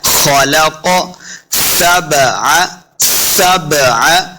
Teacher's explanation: सबअ सिन पे सीटी की आवाज आएगी,